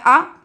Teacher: मध्य स्वर आ जाता है मध्य स्वर आपका होता है अ सरल भाषा में बताए तो छोटा आ जो होता है आपका मध्य स्वर होता है